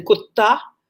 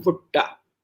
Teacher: all these languages have something called retroflexion, which is to say, ta, as in kutta, is different from ta, as in bhutta.